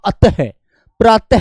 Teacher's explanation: विसर्ग की आवाज आवाज कंठ से बाहर आती है। कंठ से बाहर आती है।